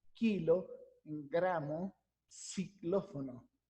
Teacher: Fíjense cómo el movimiento se da en la parte velar, en la parte posterior del velo del palatal.